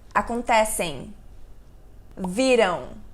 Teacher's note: quando a gente fala palavras terminadas com m a gente tem um som mais anasalado a gente não necessariamente precisa encostar os lábios por exemplo acontecem viram eu encostei meus lábios